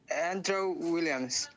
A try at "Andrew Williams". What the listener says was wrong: you said this part really well Andrew Williams that's his name